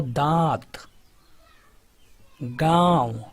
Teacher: अनुनासिक में जो उच्चारण होता है मुख के साथ नाक से भी होता है